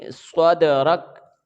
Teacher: रा को हम काफ के साथ मिलाएंगे, हालांकि काफ के ऊपर ज़बर है लेकिन चूंकि हम यहाँ पे वक्फ कर रहे हैं, वक्फ की सूरत में काफ साकन हो जाएगा, इसके ऊपर जज़म की अलामत आ जाएगी। तो रा को फिर हम काफ के साथ मिलाकर हम वक्फ कर देंगे, ये रा के ऊपर ज़बर नहीं पड़ेंगे, काफ की आवाज़ आएगी